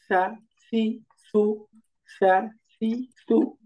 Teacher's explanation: জিহ্বার আগা, উপরের দাঁতের আগা